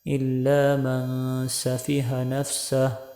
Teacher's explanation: وقف کریں گے تو آخر پر ہا کی آواز آنی چاہیے